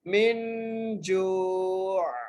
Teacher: یہاں پر حروف حلقی میں سے کوئی بھی حرف نہیں ہے تو اس لیے ہم یہاں پر غنہ کریں